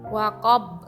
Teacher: dibaca qob dengan huruf ba disukunkan dan memantul dan dinamakan qalqalah kubro.